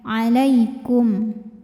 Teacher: Maka mim sukun dibunyikan dengan jelas. Jadi masih tetap bunyi asalnya M. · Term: izhar syafawi